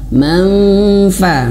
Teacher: maka bibir bawahnya ya sudah menyentuh ke gigi seri manfa. Tapi ingat, menyentuhnya jangan berlebihan tersentuh, karena kalau berlebihan tersentuh maka seperti huruf mim.